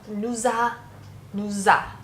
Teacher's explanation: The word we, nous, comes in front of a vowel. The S that we don't pronounce becomes a Z sound. There's lots of reasons for this, but the one that I think is best to keep in mind from my own experience is S in front of an A, when sounding it together, it doesn't quite sound as nice or as strong in French.